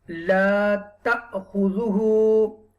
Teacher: You will read ta with a little bit jerk because hamza has a jazm sign over there. La, this is the alif madda here.